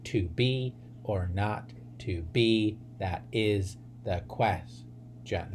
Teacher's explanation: So each line would have 10 syllables, and each pair of syllables would be an unstressed syllable followed by a stressed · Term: iamb